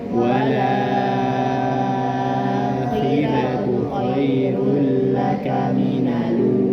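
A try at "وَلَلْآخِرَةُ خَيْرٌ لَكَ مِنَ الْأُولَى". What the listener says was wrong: Walal akhiratu. Lamnya ada 2 ya. Walal akhiratu. Jadi wala la. Jadi la-nya 2. La yang kedua dihidupkan ya. Walala ya. Wala la.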